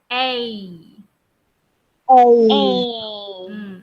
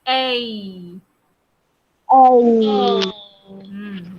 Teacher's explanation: Dalam sebutan A ada bunyi ada bunyi E. Kamu sambungkan dua-dua tu sebab tu dia jadi A. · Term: Diphthongs